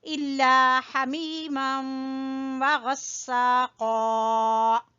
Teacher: ہا کو وسط حلق سے نکالیں گے